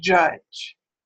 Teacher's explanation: Now they both happen to be post-alveolar. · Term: affricates